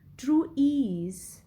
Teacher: Now the stress is more on ease. So true is unstressed and ease is stressed. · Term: iambic